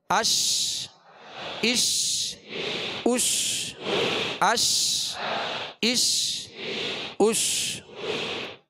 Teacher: شین کو جب ادا کریں گے تو بیچ زبان، بیچ تالو سے لگے گا تو شین ادا ہوگی، اور شین کی ادائیگی میں آواز منہ میں پھیل جائے گی